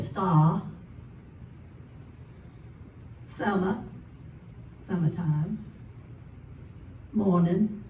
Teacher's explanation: You don't hear the R anywhere, it's gone.